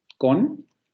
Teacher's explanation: Podemos tener palabras como con, que tienen ataque y coda, la que acabamos de ver aquí, con, tiene la consonante velar oclusiva sorda como ataque, luego tiene el núcleo con la vocal semicerrada posterior labializada, y luego tendría la coda en la nasal alveolar sonora